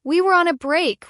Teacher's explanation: Ross says, We were on a break, with a high pitch at the end.